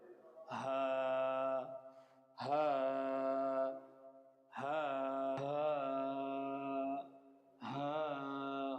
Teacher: হালকের শুরু হইতে হা, কোনো বাতাস বাইর হবে না। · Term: গোল হা